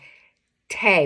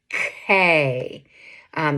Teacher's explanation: I heard your tongue hit your alveolar ridge in the front of your mouth